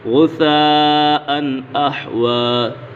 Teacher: تنوین کے بعد حمزہ آ گیا تو غنہ نہیں ہوگا۔ غثاء احوی سنقرئک فلا تنسى، قاف پر ہے اور یہ قاف کے اوپر قلقلہ بھی ہو رہا ہے۔ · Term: اظہار حلقی